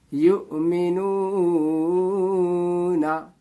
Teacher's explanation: हमजा को किस तरह पढ़ा जाता है, झटके के साथ पढ़ा जाता है। आवाज में एक झटका होता है